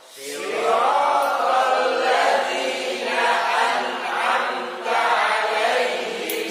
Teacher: masukin ke hidung mim sama nunnya ya. Dua-duanya.